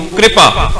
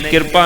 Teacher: ਇਹਨੂੰ ਕਿਰਪਾ ਨਹੀਂ ਬੋਲਣਾ ਸਿਹਾਰੀ ਰਰੇ ਨੂੰ ਜਾਏਗੀ ਹਿੰਦੀ ਵਾਂਗੂ ਕ੍ਰਿਪਾ